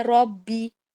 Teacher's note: پھر یہ کہ اس کے اندر تجوید کے کیا کیا رول وہ لگ رہے ہیں وہ دیکھ لیتے. ربی میں را موٹا ہے، ربی، اور با زیر بی کو شارٹ پڑھنا ہے، ربی. اوزعنی، اور او میں حروف لین ہے، یعنی کہ واو والے حروف لین میں سے ایک حرف لین واو لگا ہوا ہے، تو آپ اس کو او نہیں پڑھیں گے، او زعنی.